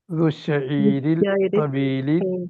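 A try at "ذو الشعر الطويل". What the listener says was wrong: ഷയീർ അല്ല ഷാർ.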